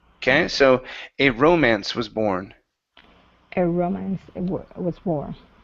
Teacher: So the stress is at the very beginning instead of romance.